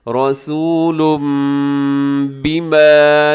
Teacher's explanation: تنوین کے بعد با آ رہا ہے تو آپ نے یہاں پر اقلاب کر دینا ہے. یعنی اقلاب کا مطلب یہ ہے کہ اپنے تنوین نہیں پڑھنی بلکہ اپنی میم کا ساؤنڈ یہاں دینا ہے. رسول ایسے اقلاب میں کیا ہوتا ہے ساتھ اخفا بھی ہوتا ہے آواز کو ناک میں بھی چھپاتے ہیں.